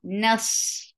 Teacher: Noon is light, but sod is heavy. Don't make noon heavy because of sod. Nas and sod will get rakhawa and safir.